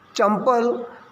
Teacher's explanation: तो जो अनुस्वार की निशानी हमने रखी है उसमें म बोला जाता है